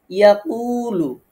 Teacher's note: ইয়াকুলু, কফ ওয়াও পেশ, কু ওয়াও সাকিন, ডাইনে পেশ আছে বা পেশের বামে ওয়াও সাকিন আসছে, এখানে একালিফ মদ আছে, একালিফ টেনে পড়ব।